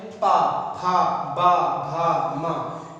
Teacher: इन वर्णों को कहां से उच्चारित करते हैं हम लोग, ओष्ठ के द्वारा स्पर्श करते हैं।